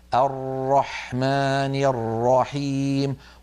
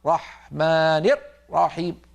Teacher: الراءات تضيقها مثلا نسمع من بعض الناس المبتدئين يقول ارحمان رحيم لما ينطق الراء يقفل مخرجها جدا ويقطع الصوت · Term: حصرمه الراءات